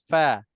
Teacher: Bibir bawah sentuh gigi atas depan, gigi depan atas.